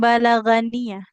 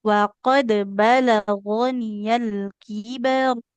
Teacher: huruf ghain itu tidak dibaca ga ya, tapi gho. Jadi bukan balaganiyah, tapi waqad balagoniyal kibar.